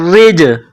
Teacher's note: جیم ساکن ہے تو یہاں پر قلقلہ کرنا ہے